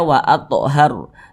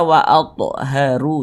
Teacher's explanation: kan tidak dibaca panjang Makanya kita sukunkan atau kita matikan sehingga kalau kita berhenti atau berwakaf tepat di huruf ro huruf r-nya kita sukunkan sehingga dibaca waathhar jangan dibaca waathharu jangan huruf rnya kita sukunkan